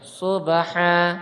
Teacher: Di sini ba dia termasuk qalqalah, kan tapi dia disughrakan, kecil ya. Pantulannya kecil karena dia di tengah ayat.